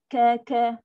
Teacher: Pangkal lidah tekan, tutup. Udara sangkut. Itu tempat dia. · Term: kaf